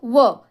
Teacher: व हा एकुलता एक वर्ण आहे जो दंत आणि ओष्ठाच्या साहाय्याने उच्चारला जातो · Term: दंतोष्ठ